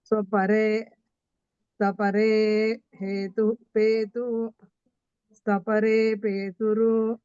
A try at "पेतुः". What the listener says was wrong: ನಾನು ಹೇಳಿದ್ರೆ ನಿಮ್ಗೆ ತಪ್ಪು ಬರಲ್ಲ ದೋಷ ಬರಲ್ಲಮ್ಮ ಪೇತುರು ಅನ್ನೋ ಬರಲ್ಲ ಪೇತುಃ ಉರ್ವ್ಯಾಂ ಬರಬೇಕು